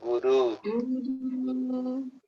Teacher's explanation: a primeira vogal é curta e a segunda vogal é longa